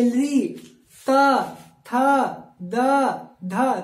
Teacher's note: लग रहा है ना कि दांत के बीच में जिह्वा स्पर्श कर रही है